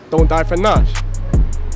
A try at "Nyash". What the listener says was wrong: It's Nyash, but I'll give you that. If you don't forget the Y in it. It's Nyash, Say Nyash.